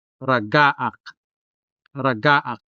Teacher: The stress falls on the second syllable.